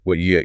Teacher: If you tried to say what you you have to stop the air flow in your mouth completely after the T and then start it again for the Y